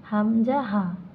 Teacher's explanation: কণ্ঠনালীর শুরু থেকে উচ্চারিত হয়